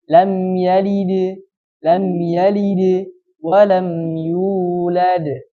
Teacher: Maka qalqalahnya hampir mendekati ke harokat kasrah.